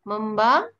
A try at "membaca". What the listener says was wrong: Sound of C, where is it?